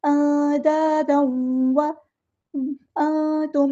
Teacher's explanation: नून की आवाज़ को हमें छुपा देना है क्योंकि यहाँ पे इख़फ़ा हो रहा है